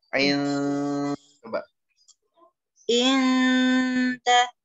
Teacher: In pas lagi berdengung tuh lidahnya udah di huruf dal. Siap-siap tapi ya belum nempel. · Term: ikfa